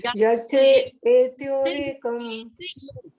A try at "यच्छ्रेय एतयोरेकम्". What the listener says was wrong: हमारा वर्ड है यच्छ्रेय एतयोरेकम। वर्ड बोलो श्रेय, अ की आवाज आनी चाहिए। यच्छ्रेय, हाँ जी, यह पूरा है ना।